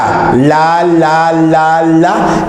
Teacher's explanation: Luego la L, digamos la, y vas a ver que la punta de la lengua llamada ápice se va sobre los dientes superiores